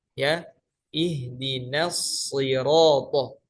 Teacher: nun tetap harus dibaca tipis, sodnya harus tetap dibaca tebal